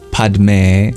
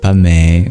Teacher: instead of padme, the D gets dropped and you have pa-me